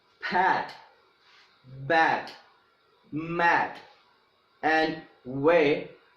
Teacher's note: bilabials are the sounds that are produced with both the upper lip and the lower lip. Upper lip and the lower lip.